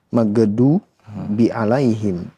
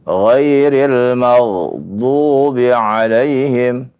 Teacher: Ghain bukanlah huruf qalqalah, ya. Karena itu ya, ketika membaca tidak perlu diqalqalahkan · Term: ditahan saja